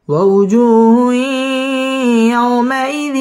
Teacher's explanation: হুই ইদগামে বা গুন্নাহ, গুন্নাহ সহ মিলিয়ে পড়তে হবে।